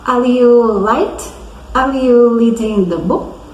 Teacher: ele trocava o R pelo L